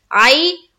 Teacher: फिर आई में क्या हो रहा है, या लीन का कायदा, या साकिन से पहले क्या है, जबर है, तो या लीन का कायदा जल्द अदा करेंगे